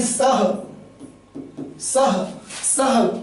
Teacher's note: सा के बाद इस विसर्ग का हा रूप में उच्चारण हो रहा है, ना कि सा से पहले